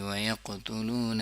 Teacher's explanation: سخت والا قلقلہ، کیونکہ قاف کے اوپر شد ہے